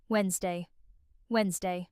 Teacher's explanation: Many learners pronounce this as it is written, saying Wednesday with 3 syllables. However, in British English, the first D is silent, and we say this word with only 2 syllables. Wednesday. The middle NS sound is very quick and light, almost like the letter N is sliding directly into Z.